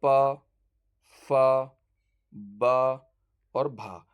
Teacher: जो ओष्ठ ध्वनि होती हैं प वर्ग वाला जितना भी होता है प फ ब और भ ये प वर्ग ये जो ओष्ठ वर्ण का मतलब क्या है ओष्ठ वर्ण जो होता है ओष्ठ ध्वनियां जब हम इनका उच्चारण करें तो हमारे दोनों होठ आपस में मिलने चाहिए